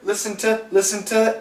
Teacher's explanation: the N can cancel the t